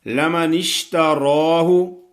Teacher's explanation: را پہ کھڑی زبر پڑھنی ہے، اس کو موٹا کرنا ہے